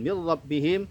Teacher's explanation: Kemudian min rabbihim ada nun sukun bertemu dengan huruf ra, hukum bacanya adalah idgham bila gunnah, diidghamkan tetapi tidak didengungkan